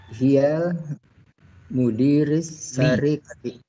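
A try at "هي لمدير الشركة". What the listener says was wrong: sini ada li mudiri.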